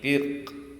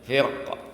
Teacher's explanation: Bisa dibaca tipis, tarkik, firq. Ya, atau tebal.